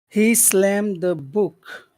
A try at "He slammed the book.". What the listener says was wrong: Can you make the book sound a little bit lower? He slammed the book. Book. Well, it's really hard to hear the high and the low tones. But if you let's compare. He book. Can you hear the difference?